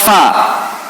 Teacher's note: Bibir bawah ketemu gigi seri atas. Bukan bibir ketemu bibir. Bukan, terjadi P.